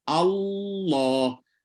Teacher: bila lidah tu dah naik, kena konsisten naik lah sampai habis. Allah. Jangan naik mula kemudian turun tengah-tengah. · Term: Lam tebal